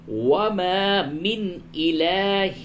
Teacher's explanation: نون ساکن کے بعد حمزہ ہے، اس جگہ پہ اظہار ہوگا